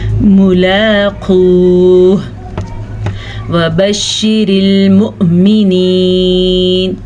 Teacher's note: झटका हमने दिया क्योंकि हमज़ा को पढ़ेंगे हम और हमज़ा के ऊपर साकिन है